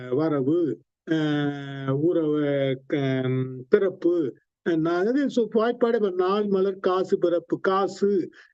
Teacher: இறுதியாக வருகின்ற தன்னுடைய உகரம் தன்னுடைய மாத்திரையில் குறைந்து ஒலிக்கும் · அந்த உகரம் குன்றி அரை மாத்திரையாக ஒலிக்கும் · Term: குற்றியல் உகரம், அக்கிய ஊ